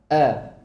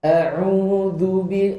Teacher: merapatkan kedua pita suara dengan kuat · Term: hamzah